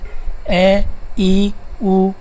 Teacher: ये ह्रस्व स्वर है क्योंकि इनके उच्चारण में दीर्घ स्वरों से कम समय लगता है।